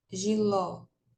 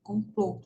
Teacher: o ó aberto né com acento agudo e o ó fechado com acento circunflexo